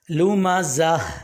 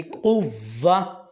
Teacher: گول تا کو ہا سے بدلیں گے اور اس کو ساکن بھی کریں گے